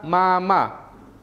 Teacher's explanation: nasal bilabial ini melibatkan bibir atas dan bibir bawah sebagai artikulator aliran udara dialihkan melalui rongga hidung dengan bibir yang berdekatan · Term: bunyi nasal bilabial